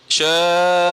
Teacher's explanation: Jangan bunyi ke dalam. Kalau bunyi ke dalam dia jadi qaf. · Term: hamzah